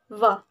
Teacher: voiced labiodental fricative sound V